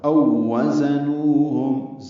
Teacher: زا کو تیز صفیر کی آواز سے ادا کریں گے · یہ اصل میں واولین ہے او، اور اس کے بعد واو آئی ہے تو ادغام ہوا ہے ، او وزنوہم، زا کو تیز صفیر کی آواز سے ادا